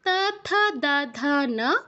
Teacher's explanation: তারপর তা থা দা ধা না, এগুলোর ক্ষেত্রে আমাদের দাঁতে, জিহ্বা সামনের পাটির যেই দাঁত, উপরের পাটির যেই দাঁত, সেখানে টাচ করবে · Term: দন্তবর্ণ